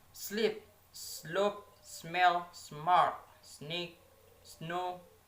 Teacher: voiceless alveolar fricative sound S